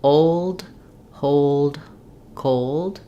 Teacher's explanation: you don't want much sound after the L going directly from the L to the D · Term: dark L, dark L's